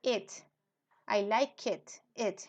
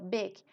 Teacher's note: una I mayúscula que es un intermedio entre la e y la i